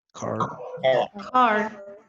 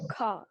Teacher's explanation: Entonces, la R del final, the R in the end, is being dropped